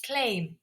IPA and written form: kleɪm (claim)